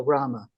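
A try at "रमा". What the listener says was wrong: Isn't there a long A at the end of that? Her name, Rama? rather than Rama. It's Rama.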